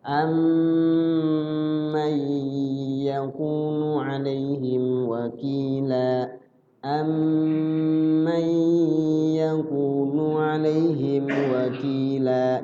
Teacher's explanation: mimnya diidghamkan, dimasukkan ke mim yang kedua. Di mim yang kedua ada jeda, ada proses waktu. Paling tidak durasinya 2 ketukan. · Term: idgham mimmi